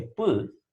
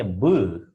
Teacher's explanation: That is, P and B have similar pronunciation. The only difference is that P is voiceless and B is voiced. · It can be easily felt by touching the area of the vocal cords while speaking these sounds. When you say P, there is hardly any vibration that you feel here. Whereas when you say B, there is a clear vibration which can be felt at the throat. This is the area where we have the vocal cords.